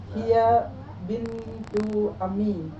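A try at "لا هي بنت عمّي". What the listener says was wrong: Yang bertasdid itu mimnya. Nah, la hiya bintu ammi.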